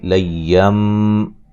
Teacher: یہاں اقلاب ہے، نون کو میم سے بدل کے پڑھیں گے، نون تنوین کے اندر جو نون کی آواز پیدا ہوتی ہے وہاں وہ پیدا نہیں ہوگی، بلکہ نون کو میم سے بدل دیں گے